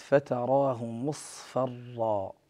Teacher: فهنا الصاد جاور الفاء، نفخم الصاد ونرقق الفاء ، لأن الصاد كما تعلمون حرف مطبق وأيضا مفخم، وكما تعلمون